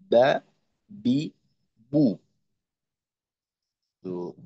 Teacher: দুই ঠোটের ভিজা জায়গা থেকে উচ্চারিত হয় বা